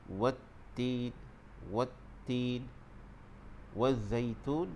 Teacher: Dalam ayat yang pertama yang dibacakan tadi, dalam ayat ni kita lihat dari segi sebutan huruf ta dan huruf zai. Di situ huruf ta dia ada syaddah, maka kita perlu tekankan di situ.